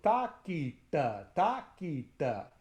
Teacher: the first ta is in the front of the mouth, and the second ta is in the back of the mouth. So takita, takita.